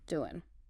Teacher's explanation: often we'll shorten ing endings to n